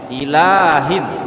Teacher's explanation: ilahnya jangan terlalu panjang ya, 2 harokat saja lahnya